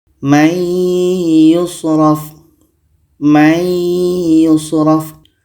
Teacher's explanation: Ya adalah huruf idgham bi gunnah. Maka nun mati ini kita masukkan ke ya dan kita dengungkan.